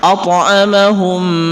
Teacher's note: Ketika ada huruf mim, mim sukun bertemu dengan mim, maka itu merupakan idgham mimi. At'amahum, maka itu dengung, didengungkan, karena sifat daripada mim tasdid itu merupakan gunnah.